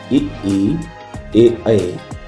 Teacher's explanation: अग्र स्वर वे स्वर हैं जिनके उच्चारण में जीभ का अगला भाग काम करता है।